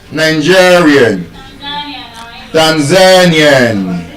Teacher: because it ends with i a n, the penultimate stress rule will will apply to it. It is stressed on the second to the last syllable. Nigerian Tanzanian So, if all of those words now is, you know, Tanzanian, Nigerian, I would like someone to tell me how would we then pronounce this word, g h a n a i a n? · And as we can see, because it ends with IAN, the penultimate stress rule will apply to it. It is stressed on the second to the last syllable.